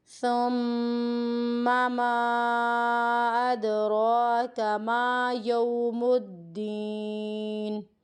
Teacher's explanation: ثم پہ جب غنہ کرنا ہے تو اس کو ہمیں لمبا نہیں کرنا۔